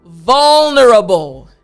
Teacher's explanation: That V, front teeth, bottom lip, and then the l sound.